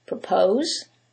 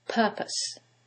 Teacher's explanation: the first one it's the second syllable that's stressed and in the second one is the first syllable and that changes the pronunciation completely the first word is propose